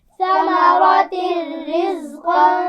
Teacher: ثمرہ میں سا کے مخرج کا خیال رکھنا ہے، بغیر سیٹی کے پڑھا جائے گا